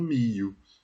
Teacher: Troca o LH por um I, mantém só a palatalidade.